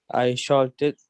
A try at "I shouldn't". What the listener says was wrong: I shouldn't. No. Shouldn't. ال لا تنطق. Silent. حرف ال هنا silent. Shouldn't.